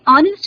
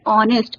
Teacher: ऑनेस्ट जब बोलते हैं तो एच साइलेंट है